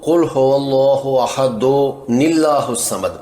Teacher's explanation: دال کی تنوین کا تلفظ دن ہوگا، جس میں سے آخری آواز نون ساکن کی آئے گی، یعنی جس میں نون ساکن ہے۔